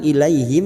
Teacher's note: fathah bertemu ya sukun Huruf Lin kita lunakkan